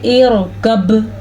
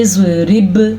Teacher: با تری سے ادا ہو رہا ہے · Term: بحری